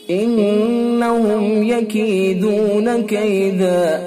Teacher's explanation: میم ساکن ہے اور اس کے بعد یا ہے، اظہار ہوگا · نون حرف مشدد لہذا حرف غنہ ہوگا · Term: اظہار شفوی